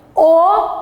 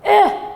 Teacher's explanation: Bu kalın, bu da ince. Bakın O kalın olarak söylüyoruz. Bu Ö ince.